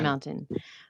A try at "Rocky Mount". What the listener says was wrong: No, Mount, Mount, not mountain, Mount. You're like mounting a horse.